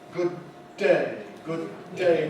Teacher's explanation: We make a single long D